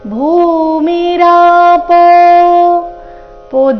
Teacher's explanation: ಭೂಮಿರಾಪೋ ದೀರ್ಘ ಭೂ ಮಹಾಪ್ರಾಣದಿಂದ ಶ್ಲೋಕ ಪ್ರಾರಂಭ ಆಗ್ತಾ ಇದೆ ಭೂಮಿರಾಪೋ ಪೋ ದೀರ್ಘ ಅವಗ್ರಹನು ಇದ್ದ ಕಾರಣ ಸ್ವಲ್ಪ ದೀರ್ಘ ಸಮಯ ಹೇಳಬೇಕು